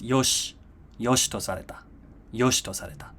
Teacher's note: in this phrase, yoshi to sareta, the I sound from shi drops. So it's unvoiced.